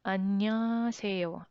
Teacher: if you omit the ng sound and h sound in the middle and then say this word quickly people will understand you